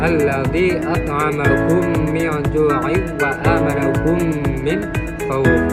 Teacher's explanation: Nah, idgham ini memiliki arti atau berarti memasukkan huruf sukun sebelumnya ke dalam huruf berharokat yang ada setelahnya. Nah, disebut dengan idgham mimi karena cara bacanya itu kita itu menyuarakan huruf mim bertasdid